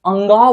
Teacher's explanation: जब हम अंग बोलते हैं तब कंठ से बोलते हैं, तो इसे कंठ नासिका कहते हैं